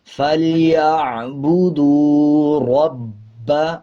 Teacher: با کے اوپر شد ہے، مضبوطی کے ساتھ پڑھیں گے